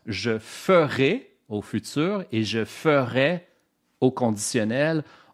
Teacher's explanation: il y a une tendance en français européen de confondre la terminaison AI et la terminaison AIS ou AIT.